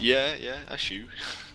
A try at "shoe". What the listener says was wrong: It sounds like a chew almost when you say it.